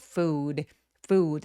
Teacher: food는 우 소리가 입술 쭉 내밀어서 길게 장음으로 소리 날 수 있도록